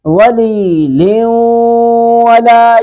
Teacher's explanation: ادغام بھی کریں گے اور ناک میں آواز بھی لے جائیں گے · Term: ادغام با گنہ